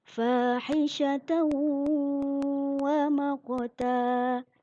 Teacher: Dalam contoh misalnya fahishatan wa maqta, ada tanwin bertemu dengan wawu dibaca dengan dengung. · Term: idgham bi gunah